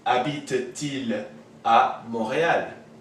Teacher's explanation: This T of the ent makes a liaison with this il.